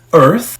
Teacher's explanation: O th tem que colocar a língua entre os dentes para suar direito.